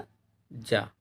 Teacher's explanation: उच्चारण स्थान की दृष्टि से ज जो है तालव्य व्यंजन है